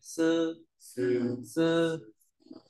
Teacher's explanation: S là giống chữ sờ nhưng không bật hơi này